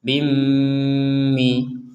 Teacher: kalau ini dimasukkan pakai dengungim seperti itu J tidak sekedar Bimi harus ada dengung kurang lebih dua harakat